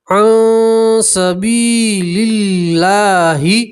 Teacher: یا مدہ اس لیے ایک الف کے برابر کھینچ کر پڑھیں گے · اللہ کے لام سے پہلے زیر ہے تو اللہ کا لام باریک پڑھیں گے